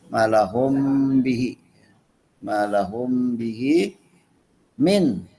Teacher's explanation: harus dibaca jelas nunnya karena ishar itu artinya jelas apanya, jelas nun sukunnya atau nun matinya atau tanwinnya, min gitu ya.